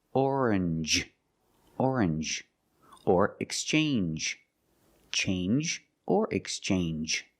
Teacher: You make the N sound, not the nasal sound, just N, and the J, like juice. J. Together, orange, orange, or exchange, change or exchange.